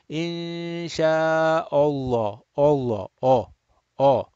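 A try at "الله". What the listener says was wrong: Hamza fatha is not oh. Hamza fatha is a. So you need to preserve that.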